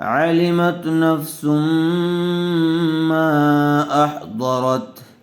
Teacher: میم کو تھوڑا کھینچ کر پڑھیں گے، اس لیے کہ حرف مدہ کے بعد حمزہ دوسرے کلمے میں آیا ہوا ہے، مد منفصل کا قاعدہ ہوگا